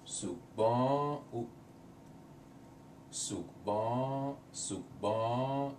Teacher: you don't really hear the N, it's more of a nasal sound